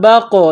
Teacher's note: بقولها با کو قاف کے ساتھ ملانا ہے، پلس کرنا ہے، یہ نقطوں والا قاف ہے اس کو موٹا کرنا ہے، قاف کے اوپر قلقلہ کریں گے با قاف زبر بق لام ذیلی ہا الف زبر ہا یہ